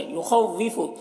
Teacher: خا کو پر پڑھیں گے، واو کے اوپر تشدید ہے تو اسے سختی کے ساتھ ڈبل ملا کر پڑھیں گے، ڈبل پڑھیں گے واو کو۔